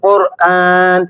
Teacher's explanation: زبان کے پچھلے حصے کو تالو کے پچھلے حصے کی طرف بلند کرتے ہوئے ہم اسے پڑھیں گے، یعنی زبان کے پچھلے حصے کو قوے والی جگہ پر لگاتے ہوئے اسے پڑھا جائے گا۔ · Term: قاف